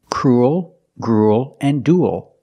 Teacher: they all have the ooh sound plus a dark l